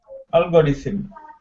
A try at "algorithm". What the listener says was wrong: Algorithm. The TH is voiced, not voiceless. So not rhythm, but rhythm. Yep, you're doing it like you're doing the TH like the word thin. But it's not thin, it's like the algorithm. You've got to practice the difference between the voiced and the voiceless TH, which takes time because in Spanish it doesn't exist, right?